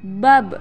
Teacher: dalam posisi mati suaranya terdengar mantul